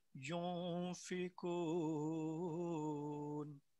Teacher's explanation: ینفقون نون کی آواز ناک کی جڑ سے نکلتی ہے، ناک کی طرف سے